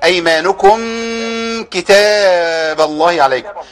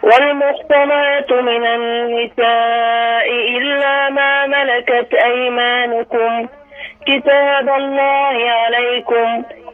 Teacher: الميم فيها غنة لكن غنة ضعيفة جدا جدا يعني، اللي هي مصاحبة للحرف